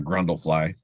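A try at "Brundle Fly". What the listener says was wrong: Not Grundle. B. B is in boy.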